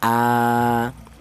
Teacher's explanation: Ini dibaca mad badal. Ini panjangnya sama dengan mad thobi dua harakat.